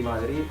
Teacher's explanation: el entrevistador ha dicho Madrid claramente con una D al final suave, pero ahí estaba la D